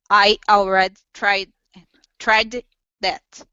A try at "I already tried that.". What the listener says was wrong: Okay, very nice.